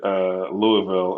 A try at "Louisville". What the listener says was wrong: that's not how you pronounce it if you're from Kentucky. So I thought there's way too many syllables